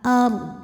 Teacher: Huruf ra dibunyikan secara tafkhim, karena huruf sebelumnya fathah. Maka, bacanya tebal ard. Dan dad ini harus tetap terbaca, ya.